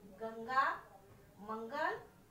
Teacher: अंग को अनुस्वार कहते हैं, अंग को अनुस्वार कहते हैं। जैसे इसका उच्चारण नाक से होता है